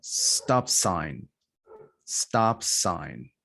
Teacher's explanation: No aspiration when you're joining a final consonant plus a different consonant.